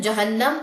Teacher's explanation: عذاب جہنم، اگر وقف لینا تو جہنم، اگر وقف نہیں لینا تو جہنما، پھر پورا پڑھیں گے. نون تشدید کا غنہ لیں گے یہاں پہ